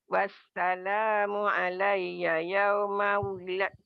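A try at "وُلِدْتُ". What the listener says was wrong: Wulidtu, dalnya masuk ke ta. Wulidtu ya Maci. Jangan wulidtu, dalnya hilang. Kolkolahnya nggak ada. Jadi dari sini wulidtu. Wulidtu.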